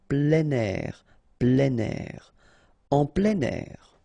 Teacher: we tend to make the liaison plein air, plein air